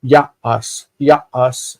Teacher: And this cannot stand in a closed syllable because now it's ya-as. The real stress is on the beginning, ya.